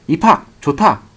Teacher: 거센 소리, 히읗과 결합하여서 입학, 좋다, 놓치처럼 두 개가 하나로 변한다는 거 알고 가면 되겠습니다. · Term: 축약